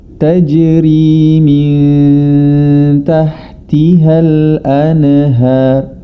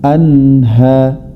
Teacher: Kemudian pada kata anhar ini yang juga perlu kita perhatikan adalah huruf nun adalah bukan dari tergolong dalam huruf qalqalah. Jadi huruf nun itu bukan dari termasuk huruf-huruf qalqalah. Jadi cara membacanya jangan sampai dipantulkan